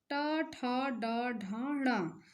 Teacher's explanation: देखिए ट वर्ग ट ठ ड ढ ण तो देखिए हम ये आवाज हमारी मूर्धा से आ रही है है ना अब आगे देखिए त वर्ग त थ द ध